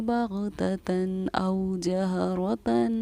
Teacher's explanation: تنوین کے بعد حروف حلقے میں سے کیونکہ حمزہ آ رہا ہے تو ہم بغتتاً تن کے نون کو سمپل ظاہر کریں گے